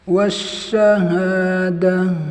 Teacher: Ini tak marbutoh, tunaikan sifat hamesnya.